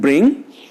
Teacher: The three-term formula is front, between, close and half close, unrounded vowel.